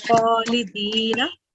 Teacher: letter kha is a thick and heavy letter. So whenever you produce the sound for that, keep the sound thick.